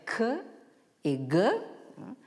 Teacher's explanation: les consonnes, qui se prononcent à l'arrière du palais, c'est-à-dire ce qu'on appelle le palais mou ou le voile du palais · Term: vélaires